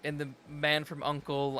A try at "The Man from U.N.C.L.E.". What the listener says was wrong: So you actually say uncle. You don't say the man from U.N.C.L.E.